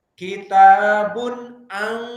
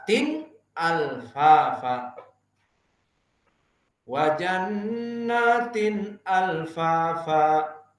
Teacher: Tidak ada dengung, idgham, dan tidak ada ikhfa, samar. Berarti apa? Nun dan tanwinnya jelas keluarnya. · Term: idhar al-halqi